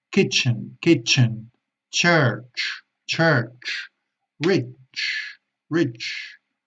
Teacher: Es un sonido que empieza con una explosión y termina con una emisión de aire, es decir, un sonido explosivo como la T que termina con la sh · Es una che con más aire, con más fuerza, acordaros, siempre más fuerza en inglés.